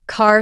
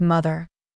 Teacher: In American English, the R sound is pronounced strongly, even at the end of words.